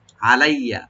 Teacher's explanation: আনআমাল্লাহু, কদ আনআমাল্লাহু আলাইয়া, আইনটাকে ওপেন করবেন, লামটাকে ওপেন করবেন, আর ইয়াটাকে ডাবল করে পড়তে হবে, টান হবে না।